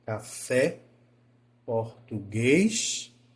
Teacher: vem de baixo para cima que aí representa a oxítona porque eu começo a palavra baixa e termino ela alta